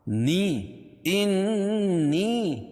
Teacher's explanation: یا ساکن سے پہلے زیر ہے تو یا مدہ اس کو ایک الف کے برابر کھینچ کے پڑھیں گے